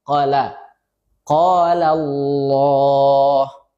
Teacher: Ini lafzul jalalahnya dibaca tebal, tafkhim.